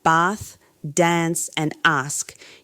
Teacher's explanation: words like bath, dance, and ask uses a long back vowel where Americans use the flat A-E-E-A. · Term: Bath words